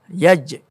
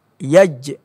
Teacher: Rupanya huruf jim ini berada pada pertengahan lidah. Bertemu dengan lelangit atas, lelangit keras.